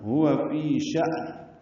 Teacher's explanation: کل یوم ہوا، ہا اقصی حلق سے ادا ہوگا، واو ہونٹوں کی نعت گلائی سے ادا ہوگی. فی یا مدہ ہے، 2 حرکات لمبا ہے · فی یا مدہ ہے، 2 حرکات لمبا ہے. شأن میں حمزہ ساکن جھٹکے سے ادا ہوگا، نون ساکن پہ اظہار ہے. اس کو شان نہیں پڑھنا، ہوا فی شأن.